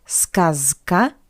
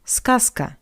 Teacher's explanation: we pronounce Z as its voiceless analog S zaska but skaska skasa z goes to s skasa.